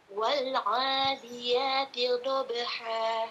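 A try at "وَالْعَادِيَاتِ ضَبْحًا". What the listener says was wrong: Baik, lamnya hilangkan le-nya. Wal a bersih.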